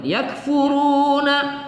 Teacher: kita baca agak berangin sedikit pada sifat hams pada kaf